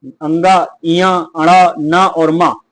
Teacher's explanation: पंचमाक्षर का जो उच्चारण स्थान होता है वो हमेशा नासिक्य होता है।